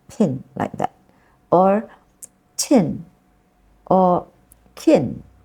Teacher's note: it actually has a slight sound right uh after the p and the T and the C